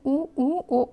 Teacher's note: तो आपका जो ओंठों की आकृति है वो वृत्त की तरह होगी।